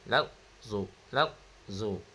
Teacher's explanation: Jadi kat sini huruf zad bersifat rakhawah iaitu mengalir. Nah. Jadi bacaan dia tidak boleh terberhenti.